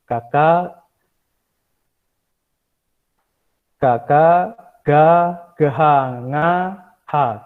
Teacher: aksara kantia puniki mawit saking suara dari kolongan ya, dari suara dalam